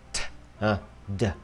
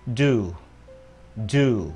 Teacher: Khác nhau ở cái cổ nó rung hay không thôi